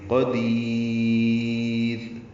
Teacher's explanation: دال کو لمبا کر دیں گے اور را باریک پڑھیں گے